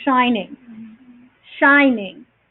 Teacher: so you have the emphasis on the first syllable and then it comes down